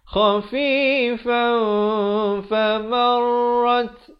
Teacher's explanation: Nak kata nun pun tidak, fa pun tidak. Di tengah-tengahnya dengan kadar 2 harakat. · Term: ikhfa hakiki